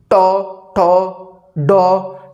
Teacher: जब भी बोल रहे हो ना ट, तो जहाँ जीभ मुड़ के जाकर चिपक रही है वो है आपका मूर्धा।